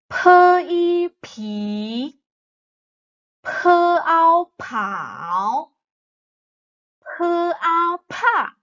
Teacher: you'll feel P has more breath coming out from your mouth